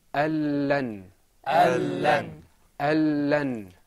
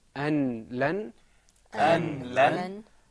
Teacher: The noon, because there's idgham here, we don't pronounce the noon, we go straight into the lam.